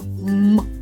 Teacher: наші губи щільно зімкнені а язик Вільно лежить на на дні ротика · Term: м твердо